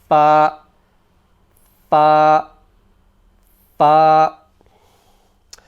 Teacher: The makhraj is the top edge of the top teeth touch the bottom lip.